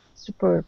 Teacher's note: the stress is at the end of the word